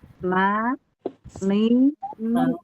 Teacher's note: dia mengandung dengung tapi dengungnya yang sangat kurang